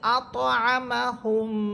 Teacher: আমরা মিম সাকিনের মধ্যে পড়েছিলাম যেটা গুন্নার তৃতীয় প্রকার ছিল যে মিম সাকিনের পরে মিম হরফ অথবা বা হরফ আসলে গুন্না করে পড়তে হবে এখানে আমরা দেখতে পাচ্ছি মিম সাকিনের পরে মিম হরফ আসতেছে এজন্য এখানে গুন্না করে পড়তে হবে